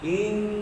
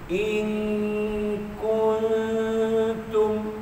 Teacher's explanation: Ing sentuh pangkal lidah, kun tak sentuh.